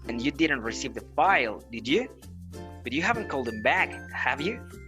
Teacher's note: the 4th kind of intonation is the full rise intonation